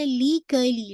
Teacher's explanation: लाम की जो कसरा है बिल्कुल शार्प रखिएगा, बारीक